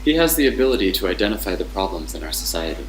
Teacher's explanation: Then it goes up at ability and goes down at problem.